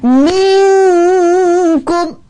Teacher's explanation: Minkum dia seolah-olah dah nak sebut dah kaf tu. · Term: ikhfa